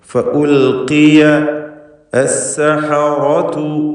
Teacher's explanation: ഫഉൽഖിയ അസ്സഹറതു, റാഇന് പൂർണ്ണമായ തഫ്ഖീം കൊടുക്കുക. · ഫഉൽഖിയ നാം സൂചിപ്പിച്ചു, ലാം ഇൽഹാർ ചെയ്യണം. ഖാഫിന് ഇസ്തിഅലാഇൻ്റെ ഹർഫാണ്, എന്നാൽ കസ്റുള്ളത് കൊണ്ട് കുറഞ്ഞ തഫ്ഖീം കൊടുക്കണം.